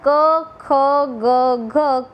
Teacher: આમ ગુજરાતી સાહિત્યની અંદર ક ખ ગ ઘ કંઠ્ય સ્પર્શ વ્યંજનો છે, કેમ કે એ વ્યંજનના ઉચ્ચારણ વખતે જીભનો પાછળનો ભાગ એ કોમળ તાળવાને અથવા તો કંઠને સ્પર્શે છે અને એને સ્પર્શીને હવા પસાર થાય છે